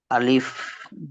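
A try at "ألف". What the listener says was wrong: আলিফে কোন টান নেই এখানে যে ক্র চিহ্ন আছে না ভাই হ্যা আলিফ কোন টানা হবে না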